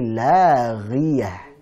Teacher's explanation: Ini bukan tipis. Ini tebal, hanya tebalannya pada tingkatan yang paling bawah, yaitu saat bertanda atau berharakat kasrah.